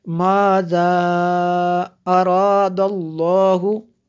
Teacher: یہ دیکھیں مد جو ہے مد منفصل ہے کیونکہ حمزہ دوسرے کلمے میں ہے